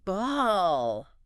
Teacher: The tip of the tongue isn't even touching the teeth.